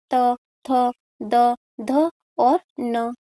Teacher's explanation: त वर्ग के सभी व्यंजन दंती के माध्यम से बोले जाते हैं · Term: दंत्य